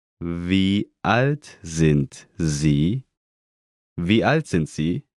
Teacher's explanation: Note again the rising intonation.